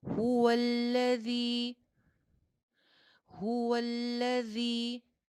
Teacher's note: जाल सीटी के साथ नहीं आएगा